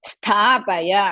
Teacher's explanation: ಸ್ಥಾ ಇಸ್ ದೀರ್ಘ ಅಂಡ್ ಮಹಾಪ್ರಾಣ